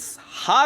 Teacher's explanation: हिंदी वर्णमाला में हा को काकल व्यंजन कहा जाता है क्योंकि उसका उच्चारण स्थान कंठ से थोड़ा नीचे होता है